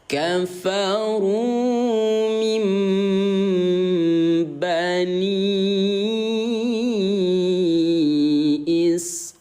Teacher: Lu'ina alladhina kafaru Ingat bun, jadi bukan dibaca min ba melainkan mim ba ya. Kita baca m bun, bukan min ba tapi mim am gitu ya.